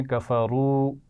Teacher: دیکھیں پڑھنے سے بھی اندازہ ہو جاتا ہے نا، آپ جب پڑھیں کفرو تو آپ آواز کو کھینچ رہے ہیں، تو اسی سے اندازہ ہو جائے گا کہ یہ واو مدہ ہے